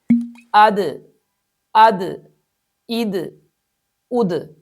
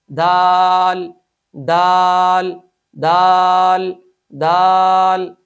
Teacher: اس حرف میں صفت شدت ہے، جس کے پیش نظر اس حرف کو سختی کے ساتھ ادا کیا جاتا ہے